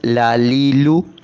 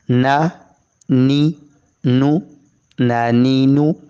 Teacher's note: غاد زبر غا، لاد زیر لی، لاد پیش لو، لا لی لو، لالیلو، لام زبر لا، لام زیر لی، لام پیش لو، لا لی لو، تینوں کو ایک سانس میں لالیلو۔ یہیں لام نون کا ایک ہی مخرج زبان کا کنارہ لگتا ہے اوپر کے دانتوں کے مسوڑوں کے ساتھ